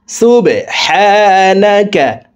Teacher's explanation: বা কলকলার হরফ নিচের দিকে ধাবিত করে ধাক্কা দিয়ে উচ্চারণ করব